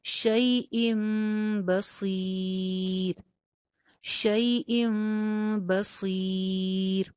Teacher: تنوین کے بعد حرف با آ گیا، جس کی وجہ سے نون کی آواز جو تھی وہ میم میں چینج ہو گئی. شیئم بصیر ہو جائے گا. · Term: اقلاب